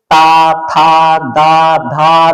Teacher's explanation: त वर्ग का जब उच्चारण करते हैं तो ये दंत से स्पर्श करता है। · अग्र भाग जो यह दंतकूट है ऊपर वाला इसके पीछे से स्पर्श करता है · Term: दंत वाले वर्ण